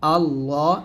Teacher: এই ল টা মোট হবে মানে লামটা মোট হবে